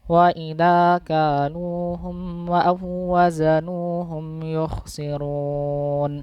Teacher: Nah, itu kurang tepat karena malah mendengung. Seharusnya tidak mendengung, tapi cukup ditasydidkan saja, ditekan. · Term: tanpa dengungan